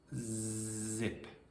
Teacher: That little buzz when you say zip, that's your vocal cords vibrating. The s in sip is unvoiced, and the z in zip is voiced. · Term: voicing